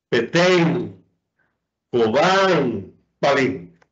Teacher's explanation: Son palabras agudas, donde la última sílaba es la que se pronuncia con mayor intensidad.